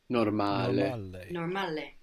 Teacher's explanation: we have the accent on the second last syllable now on the normal and the vowels we're pronouncing them clearly